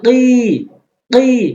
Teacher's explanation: অনেকেই ভুল করে কি বলে। এখানে কফটা হচ্ছে গলার মধ্য থেকে হয়, গলার জিহ্বার গোড়া উপরের তালুর সঙ্গে। ওই কাফ এনে উচ্চারণ করা যাবে না, কফ এনে উচ্চারণ করতে হবে।